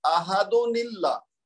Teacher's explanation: اس میں کیا ہوا، جیسے اس مثال کو آپ پورا اگر سمجھ لیں تو اس میں احدن کی دال پر تنوین ہے اور پھر دوسرے کلمہ کے شروع میں حمزۃ الوصل ہے، اللہ کا لام ساکن ہے، لہذا احدن کی تنوین کو اب صرف ایک پیش رکھتے ہوئے چھوٹی نون بنا کر کسرہ یعنی زیر دے کر اللہ کے لام سے ملا دیں گے اور یوں پڑھیں گے احدن اللہ. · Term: نون قطنی